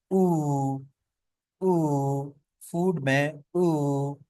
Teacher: Rounded vowels, जैसे कि lips are rounded, इसमें हमारे लिप्स गोल होते हैं।